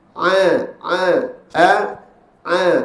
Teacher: Hamzah dua-dua tahan sedangkan ain satu tahan iaitu suara tu keluarkan sikit sahaja Kenapa suara tu keluarkan sikit Sebab Dia daripada siddah dan sifat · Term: huruf Ain